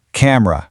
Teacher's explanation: It is incredibly tempting to say camera, but that middle e, it disappears entirely. It goes from a clunky three beat word to a sharp two beat word.